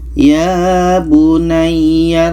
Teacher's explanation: hud ayat 42 ini maka di sini ada ba bertemu mim maka bunyi ba ini terus kita masukkan ke mim Oke bunyi ba ini tidak kita baca lagi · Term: idgham mutajanisain